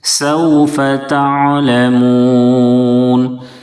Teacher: سوف تعلمون، عین کی ادائیگی میں آواز جاری رکھیں گے، عین کو درمیانی حلق سے ادا کریں اور آواز کو جاری رکھیں گے، حمزہ کی طرح آواز اچانک سے رک نہ جائے